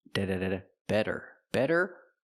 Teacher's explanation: The T is a fast D.